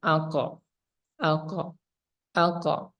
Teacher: tertahan kemudian Qalqalah ini dipantulkan aqo aqo aqa nah qalqala ini akan muncul ketika disukunkan saja